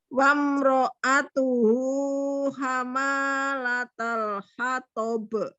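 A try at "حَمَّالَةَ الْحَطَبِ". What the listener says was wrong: Ma-nya udah bener sih panjang, tapi mimnya juga bertasydid itu.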